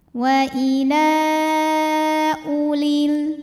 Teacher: Ini wawunya bukan wawu pemanjang. Walaupun sebelumnya hamzah berbaris dhammah, ini bukan mad badal, artinya u-nya tetap pendek. Wawu jangan dibaca ya.